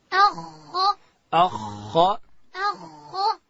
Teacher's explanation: او د خا اواز باریک وي او که ډک وي؟ د خا اواز باید ډک وي.